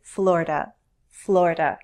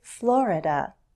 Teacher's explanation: now as someone from the Northeast I say Florida Florida with two syllables some people say Florida with 3 syllables and they're also Val